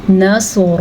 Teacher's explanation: سواد پر پڑھنا ہے۔ سواد بھی خا کی طرح حروف مستعلیہ میں سے ہے